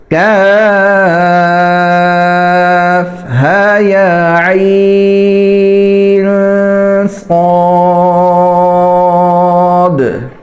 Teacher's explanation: نون عین کے آخر میں جو نون آ رہا ہے اس کے اوپر اخفاء کرنا ہے، یعنی آواز کو ناک میں چھپانا ہے